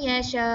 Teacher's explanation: nun mati itu dihilangkan bunyinya kerana kita masukkan terus dengan huruf ya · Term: idgham